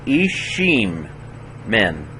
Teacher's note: Both of those yods are mothers of reading that are a vowel, not a genuine Y sound, but a vowel.